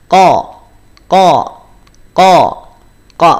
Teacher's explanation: qf bukan di pangkal tenggorokan tapi dia di Pangkal lidah